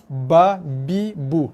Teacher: Keluar daripada dua bibir, sentuh, bibir tu mesti sentuh dan ada tekanan sikit. Sebab tu bunyi dia ketat sikit. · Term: makhraj